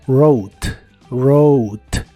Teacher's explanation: puedes escribir tu nombre por favor en el pasado es rot otra vez la wu no se pronuncia y la o se pronuncia como ou · Otra vez la W no se pronuncia y la O se pronuncia como OU. La E del final no se pronuncia tampoco.